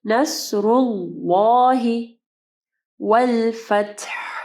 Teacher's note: اللہ کے نام کا پہلا لام جو ہے اس کو ہم لوگ ہیوی پڑھیں گے